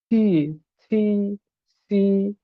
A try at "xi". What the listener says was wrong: সি না আপনি সি বলে ফেলতেছেন সি এর উচ্চারণ কিন্তু আরেকজন আছে বুঝতে পারছেন সি এর মতো উচ্চারণ আরেকজনের আছে তো আপনি সেটা বলতে পারবেন না সি